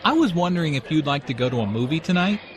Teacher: Notice how the question goes up at the end, which shows that he is not overly confident.